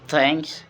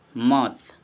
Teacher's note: The example example initial position is thanks, and the final position is mouth, and the explanation is the is the T and H is mixed, yeah. The is voiceless, dental, and fricative, and air is forced between the tongue and teeth without vibration. It's very difficult.